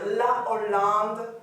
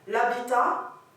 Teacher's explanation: Donc ça, c'est un H aspiré. Pas d'élision, pas de liaison. C'est une consonne à part entière. Par contre, l'habitat, c'est un H muet.